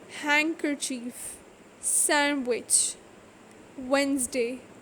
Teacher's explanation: Silent D. D is not pronounced in the following common words: handkerchief, sandwich, Wednesday.